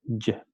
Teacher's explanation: Se va a transcribir como Y, como Y. El fonema Y es fricativo palatal sonoro, entonces es fricativo normal porque no tenemos un cierre total del flujo del aire palatal, Y, porque ocurre el punto de articulación de esa zona palatal que está justo después de los dientes y es sonoro, Y.